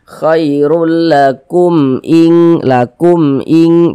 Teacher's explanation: Maka ini hukumnya izhar syafawi. Dibaca jelas tak berdengung. Baca pendek saja.